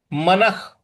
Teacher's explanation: म के बाद जो विसर्ग है उसका उच्चारण हमें ख में ले आना है।